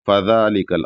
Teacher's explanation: ذال پر کھڑا زبر ہے تو ایک الف کے برابر کھینچنا ہے بس، فذالکل، اور ذال یہاں پر پتلا ادا ہوگا، فذالکل اس طریقے سے۔